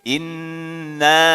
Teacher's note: Kemudian setelahnya adalah nun bertasydid ya. Maka nun bertasydid ini hukumnya adalah didengungkan atau dengan istilah idgham bi gunnah, masuk dengan suara dengung ya. Jadi jangan terlalu jangan terlalu singkat.